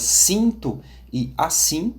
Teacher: existe também o IN, mais nasalado, como nas palavras cinto e assim